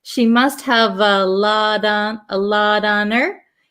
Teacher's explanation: this T in lot becomes a flap T so it almost sounds like a d